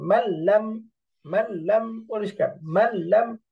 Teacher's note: তার মানে মাঝখানে নুনটা সাইলেন্ট থাকতেছে, মাল্লাম, নুন বাদ পড়ে একেবারে নুন সরাসরি লামকে ধরে ফেলতেছে, মাল্লাম, মিমটাই লামকে ধরতেছে, মাঝখান থেকে নুন সাইলেন্ট, মাল্লাম, মাল্লাম। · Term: গুন্না ছাড়া ইদগাম